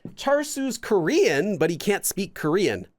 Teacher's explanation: Korean but he can't speak Korean notice how we have Korean it goes up and then down and then back up again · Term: intonation